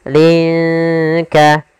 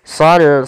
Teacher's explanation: Cara membacanya samarkan linnya ke huruf kaf. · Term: ikhfa